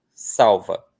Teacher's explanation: No outro, o sonzinho de u, que está sendo representado pela letra L, não é tão forte assim. Então a gente vai pronunciar com força no A e não vai ter aí outra vogal